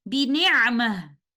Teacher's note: And upon continuation, we will follow the vowel, and upon stopping, we will stop with ha sakina